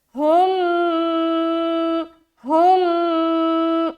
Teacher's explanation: अब यहाँ पर देखिए मीम साकिन के बाद दूसरी मीम है तो ये क्या हो गया, इदगाम शफवी का कायदा हो गया, ठीक है। तो यहाँ पर मीम को मीम से मिलाकर इदगाम करेंगे, गुन्ने के साथ पढ़ेंगे